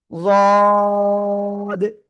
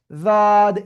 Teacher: জিহ্বার গোড়ার কিনারা ডান পাশ হোক বা বাম পাশ হোক, যে কোনো এক পাশ উপরে মাড়ির সাথে লাগবে, লাগিয়ে আমাদের এই অক্ষরটা উচ্চারণ করতে হবে, যদ। খেয়াল রাখতে হবে এই যে জিহ্বার আগা, এই উপরের দুই দাঁতের আগায় যেন শুরুতে না লাগে, যদ এরকম যেন না হয়।